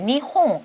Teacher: 니은과 이응의 중간 비슷한 발음이 나거든요